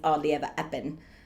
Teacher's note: to mimic Eliza doitt is very fun so you get that you drop the H's you drop a lot of the RS you drop a lot of your consonants